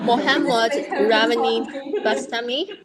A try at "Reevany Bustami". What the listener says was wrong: Reevany Bustami, B-U-S Bustami. Not Basta, Bustami. You pronounce it like a Malay spelling, right? Malay spelling is how Bu is Bu, right? U-S Bu. So it's not like English, so it's like Reevany Bustami.